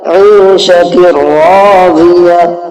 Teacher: اور تنوین کی جو آواز ہے نون کی اس کو ختم کر دیں گے، را کی آواز یہاں پر نکلے گی۔ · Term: ادغام